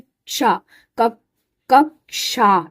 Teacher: इसमें क और श मिला इसलिए इसकी साउंड में भी श क और श की आवाज आती है।